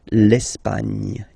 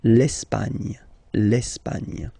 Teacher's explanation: don't insist on the final E because basically it's not pronounced